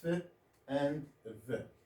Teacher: the lower lip into contact with the upper teeth when we produce f and v